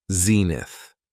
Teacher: it has two syllables and the stress is on the first syllable